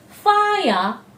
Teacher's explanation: the i diphthong coming together with the schwa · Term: triphthong